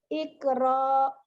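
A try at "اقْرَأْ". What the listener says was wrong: Kenapa panjang ya? Kalau berhenti di hamzah nggak boleh panjang.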